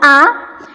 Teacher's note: ketika misal nih hidung kita itu ditutup kita mengucapkan huruf hamzah A dan ketika tidak ditutup hidungnya A itu suaranya sama Nah kalau nanti suaranya beda agar dengungnya gitu nanti tempat keluarnya · huruf hamzah itu adalah huruf yang keluar dari tenggorokan bagian pangkal